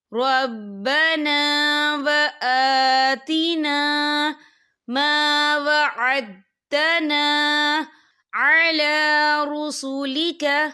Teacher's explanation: حمزہ کے پر کھڑی حرکات ہے تو ہم اسے 2 یا 3 حرکت کے برابر کھینچ کے پڑھیں گے